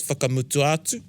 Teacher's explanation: So it's two words, whakamutua and atu. And then you run the last a of the whakamutua into the a of the atu, and it's whakamutu atu.